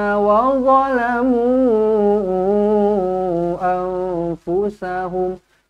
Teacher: mu dibaca dengan panjang di sini empat ataupun lima harakat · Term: Mad Jaiz munfasil